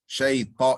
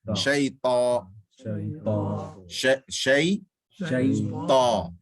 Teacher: Shay, ta. And then in ta, it's minimum lips. There's no lips involved. Shay, ta, it's all tongue.